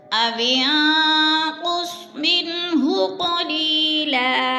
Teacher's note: نون ساکن کے بعد ہا حروف ہلکی میں سے ہے تو اظہار ہے، ظاہر کر کے لفظ کو پڑھیں گے، غنہ نہیں کریں گے